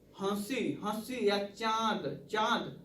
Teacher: नाक और मुंह दोनों से दबाव के साथ, यानी दबाव के साथ हवा बाहर निकल रही है, इसलिए इसे हम क्या कहते हैं, अनुनासिक कहते हैं।